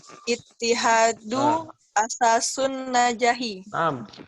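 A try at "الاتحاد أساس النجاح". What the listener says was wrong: Ini ada alif lamnya. Jadi gimana bacanya? Al-ittihadu. Coba ulangi. Al-ittihadu asasun najahi. Kenapa ini bacanya al meskipun nggak ada sukun? Karena alif lam. Alif lam. Iya, alif lam.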